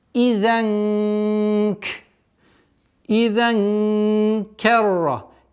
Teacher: Мягкое сокрытие, правильное сокрытие в размере двух огласовок удержим.